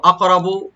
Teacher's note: আইয়ুহুম আকরাবু, আকরাবু হামজাকে right দিয়ে কাফ একটু কলকলা করতে হবে, রা একটু মোটা করে করতে হবে, মোটা করে পড়তে হবে, বাতে কোনো টান নাই।